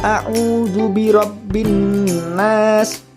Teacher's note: bunyi huruf lam hilang dan melebur ke dalam huruf berikutnya karena cara membacanya di idghomkan maka sering disebut dengan Idgham Syamsiah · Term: idgham syamsiyah